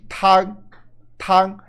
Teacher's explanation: É pouco nasal e mais saindo pela boca, mais oral.